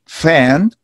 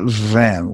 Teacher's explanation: we have van what is the difference the difference is the the vocal cords are vibrating